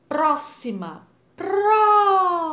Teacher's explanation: A sílaba tônica é a antepenúltima, logo ela é proparoxítona.